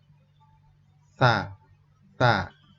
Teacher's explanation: huruf ta dibaca ujung lidah dirapatkan dengan gigi atas ujung lidah ujung lidahnya Dek dapatkan dengan gigi atas ta ta